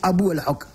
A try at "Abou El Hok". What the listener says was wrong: Vous prononcez mal, redites-le voir, j'ai l'impression que vous vous trompez d'un H. Abou El-Hok ou Abou El-Hok?